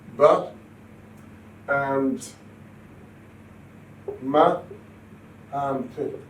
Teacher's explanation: A bilabial sound which is produced by pressing the two lips together